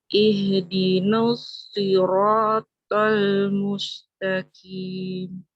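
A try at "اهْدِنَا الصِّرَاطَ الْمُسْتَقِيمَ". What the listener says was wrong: Mumtaz, Masya Allah. Mumtaz. Barakallahu fiik, Mbak. Seperti itu yang barusan ya, yang diinginkan.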